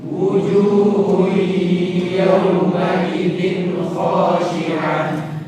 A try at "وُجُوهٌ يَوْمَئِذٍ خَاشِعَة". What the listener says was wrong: وجوه gunnah ya. Jadi tidak cukup wujuhu ya. Wujuhu gunnah, dengung ya. Idgham bi gunnah. Jadi akan sempurna idgham bi gunnahnya dengan menampakkan suara dengungnya. Wujuhu yawma idzin khashi'ah.